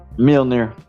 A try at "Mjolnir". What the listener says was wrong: You're saying it like mildew. It's Mjol. Mjol? Say it like mule.